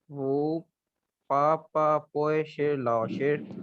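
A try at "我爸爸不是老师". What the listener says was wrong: ये है जी वाह, इसको आप वाह स्पीक करेंगे, वो नहीं स्पीक करेंगे, ठीक है। वाह, जी वाह पू, बी यू पू, पे वाव के साथ पू आप स्पीक करेंगे। वाह पापा पू शिलाओ शिट, my father is not a teacher, सो नी शिलाओ शिरमा।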